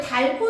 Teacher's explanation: 그러면 히읗은 떨어져 나가는 건데 그때 얘를 붙이기 전에 무슨 현상이 일어날 수 있어? 히읗과 기역이 만났으니까 거센 소리가 될 수 있거든요